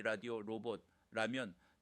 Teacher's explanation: 혀가 어딘가에 머무르는 것이 아니라 빠르게 스치고 지나가야 하기 때문입니다. 특징, 혀끝으로 잇몸을 가볍게 탁 치고 내려와야 합니다. 힘이 너무 많이 들어가면 D 소리가 나고 혀가 천장에 닿지 않으면 E나 영어 R 소리가 납니다. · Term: 초성 R